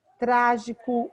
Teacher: Trágico, o acento é no trá